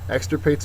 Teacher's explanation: Extirpate's a verb. First syllable is accented.